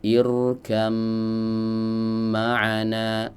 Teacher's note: Maka diidgamkanlah ya huruf ba yang sukun ini ke huruf mim menjadi irkam ma'ana. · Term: idgham mutajanisain